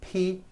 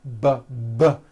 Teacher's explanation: are produced exactly the same way here in your mouth but the P sound has no voicing and the B sound BB does have voicing